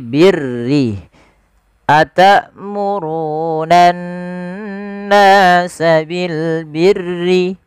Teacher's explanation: huruf ra yang dibaca dengan tipis, yaitu ra tarqiq, yang dimana huruf ra-nya berharakat dengan berharakat kasrah.